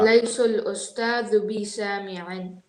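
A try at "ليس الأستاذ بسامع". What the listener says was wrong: I heard laysul. I don't want to hear laysul. I want to hear laysal. Laysal ustadu bi sami'in.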